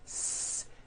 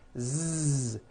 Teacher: s has no voicing s z has voicing Z